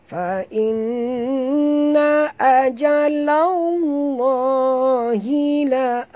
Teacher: Dan lam di tengah-tengah lam pada lafaz jalalah dibaca tebal kerana lam berbaris di atas.